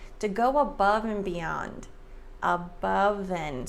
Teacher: So the V sound links to the A, above and beyond.